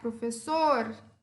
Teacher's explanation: O sor é a minha sílaba tônica.